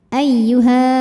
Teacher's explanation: hukumnya adalah Mad thiiohiri sebab ada Alif yang sebelumnya berbaris fathah cara membacanya huruf Ha ini kita panjangkan dua harakat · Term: Mad thobi'i